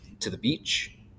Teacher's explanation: unstressed unstressed stressed is anapest